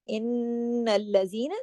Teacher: नून पे शद है, लंबा गुन्ना होगा